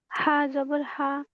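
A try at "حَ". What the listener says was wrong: হা ভিতর থেকে আসবে না। মুখটা বড় করে হচ্ছে একেবারে হলকের শুরু থেকে আনেন। স্বাভাবিকভাবে। হা জবর হা। আপনি সবাই ভুল করে হচ্ছে হা উচ্চারণ করতে। আর আপনি ভুল করতেছেন হা উচ্চারণ করতে। আপনার ভিতর থেকে আপনার হচ্ছে হলকের মাঝখান থেকে আওয়াজটা আসতেছে। আসবে হচ্ছে হলকের শুরু থেকে।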